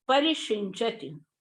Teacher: जैसे परिशिंचति, यहाँ पर परि उपसर्ग है, कर्म प्रवचनीय नहीं है, इसलिए शिंचति का सा जो है वो मूर्धन्य शकार हो गया है